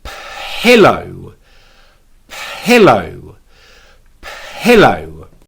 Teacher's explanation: we add the P Sound by Whispering it keeping our hand on our throat to make sure there's no vibrations